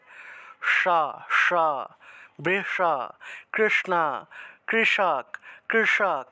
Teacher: জিউটাকে উল্টিয়ে মূর্ধাতে স্পর্শ করে করলেই মূর্ধন্য এর উচ্চারণ হয়